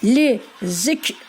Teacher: Lizikir lizik kir diye okumuyoruz. Ağzımızdan i kelimesi çıkmayacak.